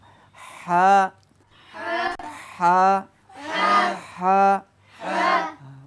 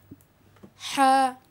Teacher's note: হায়ের মধ্যে যেটা আমাদের দেশে অনেকেও আমরা চাপাচাপি করি এটি ভুল স্বাভাবিকভাবে বলতে হবে বাতাস বের হবে নরম হবে হামস মানে নরম হা